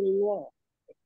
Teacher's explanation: Lam jalalahnya tebal sayangnya. Karena sebelumnya ada dhamma.